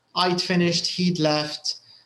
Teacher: so it's a very light d sound and very often it's actually contracted